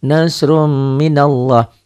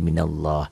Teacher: Ini lafaz Allah dibaca tabkhim, dibaca tebal.